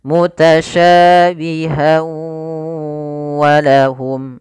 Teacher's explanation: Bila kita bersambung mutasyabiha wa, maka berubah menjadi hukum tajwid berupa idgham bi gunnah. Idgham disertai dengan gunnah, maka masukkan tanwin pada huruf ha, masuk kepada huruf waw dan ditahan suara wawnya.